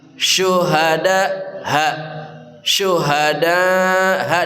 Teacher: ha dari pangkal kerongkongan